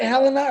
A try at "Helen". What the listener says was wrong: It's Helen. Don't worry about the E at the end. It's Helen.